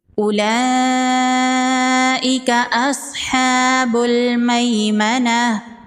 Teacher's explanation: صاد حروف مستعلیہ میں سے ہے، صاد کو پر پڑھیں گے